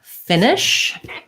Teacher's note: finish has first syllable stress · because the first one is stressed it's going to be a little longer and then the next one is going to be more of a reduced vowel still the same sound just like we have the two schwas